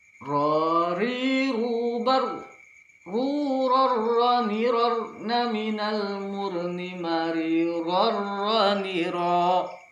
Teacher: Ada sedikit getaran, namun tidak berlebihan. Tidak boleh pula lebih dari 2 getaran.